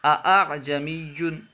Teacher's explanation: سورہ حامیم سجدہ میں جو ہے نا، یہ جو لفظ استعمال ہوا ہے اعجمیوں، یہ جو ہے اس میں جو دوسرا حمزہ ہے اس میں تسہیل کرنا ہے، دوسرے حمزے کو نہ ہی الف سے بدلنا ہے اور نہ ہی اسے خوب ظاہر کر کے پڑھنا ہے، بلکہ دونوں کے درمیان پڑھنا ہے